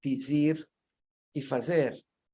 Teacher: el sonido de la z no es el mismo que tenemos en español peninsular de hoy es casi como una Zeta italiana